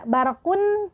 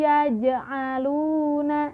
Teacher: Tidak dibaca barakun ya, tetapi dimasukkan, di mana tanwin dhammah ini berubah menjadi dhammah biasa, yaitu yang dibaca u dan masuk ke huruf ya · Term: idgham bil gunnah